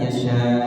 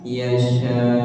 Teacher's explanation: ada tekanan di akhirnya ya